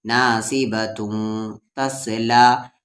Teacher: تنوین کے بعد آگے تا آ رہا ہے اور تا حروف اخفا ہے، تو تن نہیں توں ہوگا